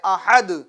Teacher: تو جب آپ وقف کریں گے دال پر رکیں گے, ٹھہریں گے, اپنی آواز اور اپنی سانس کو دال پر توڑ دیں گے تو یہ دال کے اوپر جو تنوین ہے وہ سکون میں بدل جائے گی. کس میں بدلے گی, سکون میں, بدل جائے.